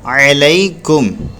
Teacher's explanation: आइन को भी नहीं खींचेंगे, लाम को भी नहीं खींचेंगे, क्योंकि आइन को इसलिए नहीं खींचेंगे ज़बर के बाद अलिफ नहीं आ रहा है, और लाम को यूँ नहीं खींचेंगे क्योंकि ज़बर आ रहा है, ज़बर के बाद या आ रही है।